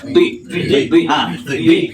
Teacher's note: Lengketkan dulu ujung lidah. Nah, tapi bunyinya agak bulat mulutnya. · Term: Dot